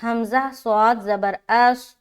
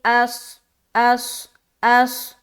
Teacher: اب یہاں پر صاد جو ہے نا موٹا حرف ہے اور اس میں صفت صفیر بھی پائی جاتی ہے، تو جب ہم صاد کو ادا کریں گے تو موٹا پن بھی معلوم ہونا چاہیے اور سیٹی نما بھی معلوم ہونا چاہیے